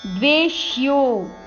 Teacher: ದ್ವೇ ಮೇಲೆ ಆಘಾತ, ಯೋ ಆದ್ಮೇಲೆ ಅವಗ್ರಹ, ಸ್ವಲ್ಪ ದೀರ್ಘ ಹೇಳಬೇಕು ಯೋ ಅಕ್ಷರವನ್ನು